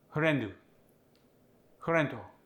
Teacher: we lost the F it was replaced by an H